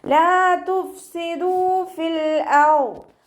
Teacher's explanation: ദാലിൻ്റെ കൂടെ വാവ് മദ് വന്നു, അവിടെ നമ്മൾ 2 കൗണ്ട് നീട്ടി പാരായണം ചെയ്യുക